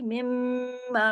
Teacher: मिम पे तशदीद है तो इसमें गुन्ना होगा